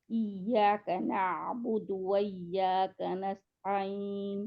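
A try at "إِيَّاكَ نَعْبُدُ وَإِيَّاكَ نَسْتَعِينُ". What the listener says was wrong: दूसरी या को भी निकाले जरा थोड़ा सा और। इय्याका, बहुत नरमी के साथ, इसको नरम भी है ना या, नरमी के साथ है, इसकी आवाज में नबर करनी है।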